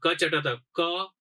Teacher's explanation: તાળવેમાં ચ, પછી મૂર્ધામાં ટ, પછી ત છે એ દંત્ય અને પ છે એ ઓષ્ઠ્ય